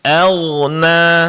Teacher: ghain di sini ditebalkan, suara dilepaskan ya Pak ya, jangan tertahan sehingga agak mirip dengan G nanti ya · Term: huruf ghain